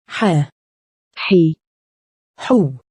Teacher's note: Ha corresponds to the English H, but it's much more throaty. It sounds like the sound you make when trying to cool your mouth and throat after eating something very spicy.